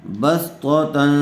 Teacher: تنوین کے بعد حروف اخفا میں سے فا آیا ہوا ہے، اس لیے غنّے کے ساتھ اخفا کر کے پڑھیں گے